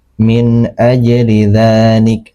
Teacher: nun di sini dibaca jelas, tidak disamarkan, tidak didengungkan karena dia bertemu dengan huruf alif. Alif ini termasuk huruf ee tenggorokan.